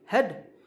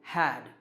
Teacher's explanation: The first one is weak, had, and the second is strong, had.